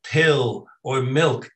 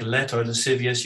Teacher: you have a very dark l which is a very different type of l